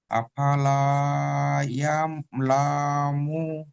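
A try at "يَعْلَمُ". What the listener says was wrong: ইয়ালামু, লাম টান হয়ে যাচ্ছে।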